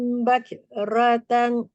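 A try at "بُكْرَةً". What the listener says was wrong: Bukratan. Bukan, tadi bacanya buk, bukannya bak. Bukrotan.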